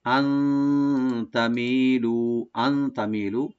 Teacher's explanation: এখানে নুন সাকিন আমরা ইখফা করবো, এখানে লাইট গুণা করবো একটু